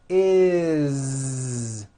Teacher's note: It's always is with a voiced Z.